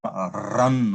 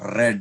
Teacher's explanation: For example, the sound r, as in run or red. In India, because in our Indian languages, we have a rhotic R. So the r is sounded with a lot of stress